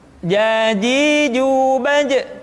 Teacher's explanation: Padahal kalau kita melihat sifat yang dimiliki huruf ja, dia tidak boleh mengalir nafas karena sifatnya al-jahr, lawan dari al-hamas.